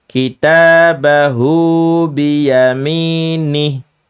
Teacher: Hu-nya panjang, nih-nya pendek.